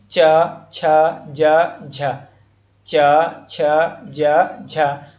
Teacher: च, छ, ज, झ को स्पर्श संघर्षी व्यंजन कहते हैं, क्योंकि इनके उच्चारण में ध्वनि तालव्य को स्पर्श करते हुए निकलती है